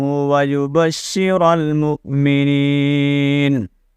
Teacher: مؤمن حمزہ کو جھٹکا دینا ہے